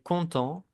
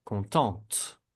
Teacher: En el féminino se va a pronunciar la T. Porque ya vamos a pronunciar la última consonante antes de la E.